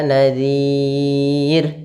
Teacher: Huruf ra di sini karena sebelumnya huruf kasrah dan didahului dengan huruf mad, maka dia dibaca dengan bacaan tipis